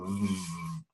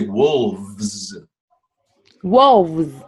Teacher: A V, right, is a voiced sound, right? And you do it by your top teeth on your lower lip